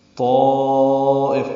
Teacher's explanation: طائف میں الف مدہ ہے، طا اور اس کے بعد حمزہ یا کی شکل میں اسی کلمے میں آنے کی وجہ سے مد متصل ہے، لمبا کریں گے